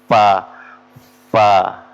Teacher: gigi seri kita bertemu dengan bibir bawa fa fa ya Jadi bukan pa ya bukan ee bibir ketemu